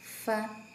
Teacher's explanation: bibir bawah bertemu dengan gigi seri atas